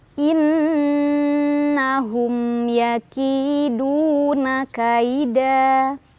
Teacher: nunnya dibaca dengan dengung, ditahan dulu sampai kerasa ke hidung, baru dilepas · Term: gunnah musyaddadah